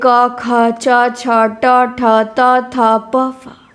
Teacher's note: प्रत्येक वर्ग का पहला और दूसरा वर्ण तथा तीनों स ये अघोष में आते हैं।